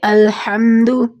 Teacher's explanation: شروع میں الف ایسا الف موجود ہونا جو کہ پڑھا نہ جائے، جس کی آواز نہ محسوس ہو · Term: الف وصل